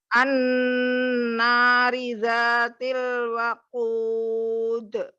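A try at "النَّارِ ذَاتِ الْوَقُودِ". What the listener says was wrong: Ri-nya tipisin lagi ya. An-nari, ri.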